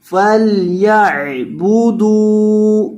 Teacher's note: دال کو لمبا کرنا ہے کیونکہ دال کے بعد واو مدہ ہے